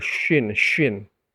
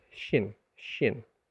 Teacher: dia tetap huruf lidah bagian tengah bukan huruf bibir